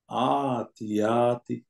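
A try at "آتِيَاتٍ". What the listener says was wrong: ইয়াতে আপনি টান দিলেন আতিয়াতি।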